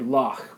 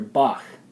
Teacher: We're going to have that kind of back of throat sound that almost is a CH, an airy kind of CH sound